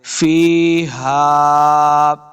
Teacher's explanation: ہا کو حلق کے نچلے والے حصے سے ادا کرنا ہے · یا مدہ اس کو دو حرکات لمبا کریں گے ، فیہا، ہا کو حلق کے نچلے والے حصے سے ادا